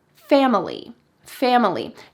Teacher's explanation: She used 3 syllables, and that middle syllable is very typical of Spanish speakers. She didn't say fam-ili with a short I, family.